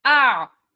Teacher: आ से शुरू करके ऐन के मखरज पे एंड करना है। ठीक है? आ की आवाज जारी रखकर उसी में मैंने ऐन का मखरज भी मिला दिया। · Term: ऐन साकिन, आइन साकिन